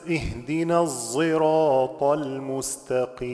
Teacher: الصراط المستقيم بالاشمام لحمزه بتمامه في هذا الحرف